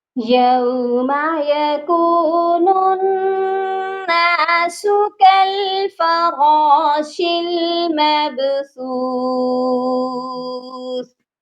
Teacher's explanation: یہاں پر نون مشدد ہے اور نون مشدد پر ہمیشہ غنہ ہوتا ہے، نون کو ہم نون کے ساتھ ملائیں گے اور غنہ بھی کریں گے۔